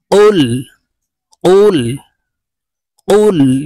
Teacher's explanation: আমরা অনেকে কুল বলে থাকি কাফের উচ্চারণ করে থাকি এখানে অফ জিব্বার গোড়া থেকে উচ্চারণ হবে